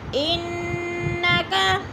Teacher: ان کی نون مشدد ہے، سختی سے جمع کر پڑھیں گے